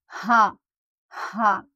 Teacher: इस हा को हमें गले के बीच के हिस्से से, जहाँ की हमारी गले की हड्डी होती है, वहाँ से हमें अदा करना है